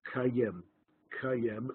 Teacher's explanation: the aleph was totally lost, and the two syllables just blended together, like cooperate, just blended together, and ka'im became kayem, kayem, and it began to spell it with yud instead of an aleph, kayem, kayem, as though there's a yud in the word.